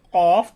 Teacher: জিহবার গোড়া তার বরাবর উপরের তালুর সঙ্গে লাগাইয়া দুই নক্তা ওয়ালা কফ